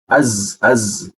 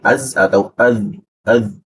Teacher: Huruf Z-nya itu kita perkuat posisinya itu di belakang gigi di huruf za